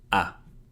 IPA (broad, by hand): a